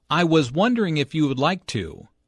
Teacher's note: Notice how the question goes up at the end, which shows that he is not overly confident.